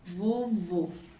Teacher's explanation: a minha sílaba mais forte é a última aonde está o acento circunflexo